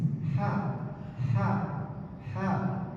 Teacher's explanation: Dia keluar dari wasatul halqi, tengah tenggorokan.